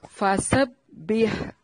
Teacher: سین کو باریک سیٹی سے، ہا کو واضح کر کے پڑھنا ہے